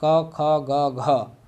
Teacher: ये सभी क ख ग घ कंठ से ही उच्चारित होंगी। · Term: का वर्ग